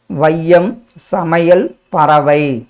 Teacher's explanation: இதுதான் நம்ம என்னன்னு சொல்லுவோம், ஐகார குறுக்கம். ஐ தனியாக வந்தால் 2 மாத்திரை, சொல்லின் முதலில் வந்தால் 1.5 மாத்திரை, இடையிலும் இறுதியிலும் வரும்போது 1 மாத்திரை · ஐ தனியாக ஒலிக்கும் போது 2 மாத்திரை அளவில் ஒலிக்கும். சொல்லின் முதலில் வரும்போது 1.5 மாத்திரை அளவில் ஒலிக்கும். இடையிலும் இறுதியிலும் வரும்போது 1 மாத்திரை அளவில் ஒலிக்கும்.